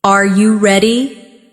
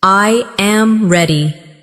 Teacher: pitch of their voice goes up at the end.